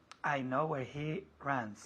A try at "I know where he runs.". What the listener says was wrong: I know where he runs con esta U. I know where he runs, decimos. I know where he runs. Eso con la R fuerte, no. I know where he runs. I know where he runs con una R muy inglesa. I know where he runs.